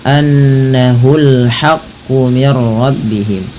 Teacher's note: ada gunnah pada lafal nun berharokat tasydid, tahan bunyinya